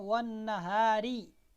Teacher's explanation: یہاں پر دیکھیں را وقف کی وجہ سے تو موٹی پڑھی جائے گی، لیکن اگر ہم ملا کے پڑھتے ہیں، ہم کہتے ہیں والنہاری، تو را کے نیچے زیر ہے، را باریک پڑھی جا رہی ہے